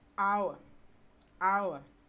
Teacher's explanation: a combination of the long vowel sound and the short sound so the ow sound combines with the schwa sound